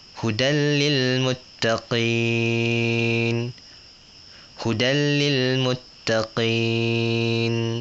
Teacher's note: Hud salah kalau kita baca panjang contohnya itu salah dia pendek